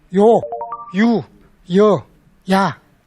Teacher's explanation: 지금식으로 하면은 소위 이 모음으로 시작되는 이중모음들입니다.